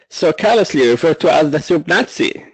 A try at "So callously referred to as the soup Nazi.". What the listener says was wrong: Give me more short A. I'm missing a little bit of A here, so I want more. Referred to as the soup Nazi. Sometimes it was a little short, so watch your short A's, okay?